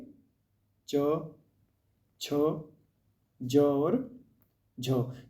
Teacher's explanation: यदि आप इनका उच्चारण करेंगे तो श, श, स की तरह ही इसमें भी संघर्ष करना पड़ता है हमें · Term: स्पर्श संघर्षी